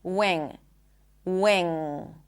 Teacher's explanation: The second one is the ng sound. And as you can hear I do not pop the g. Wing. There is no g sound.